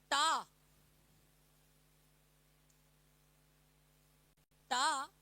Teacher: ट ट वाली जो लाइन है वो मूर्धन व्यंजन कहलाती है